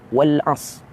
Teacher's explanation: Ra hilang. Tak disebut, tak dibaca ra itu. Wal as. Ra tak sebut.